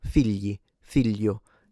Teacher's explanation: And generally speaking, it's also, and in standard and southern varieties, there is also a little bit of a lengthening in the sense that inside a word, so in isolation, gli, but if it's inside a word, it oftentimes sounds a little bit geminated